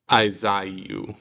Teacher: splitting those vowels and making two syllables